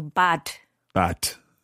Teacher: the Germans often pronounce it with a harder D than it's written